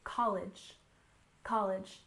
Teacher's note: college has stress on the first syllable